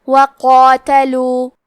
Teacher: کلمت قاتلو میں قاف کو اور مد الف کو دونوں کو تفخیم سے ادا کریں گے۔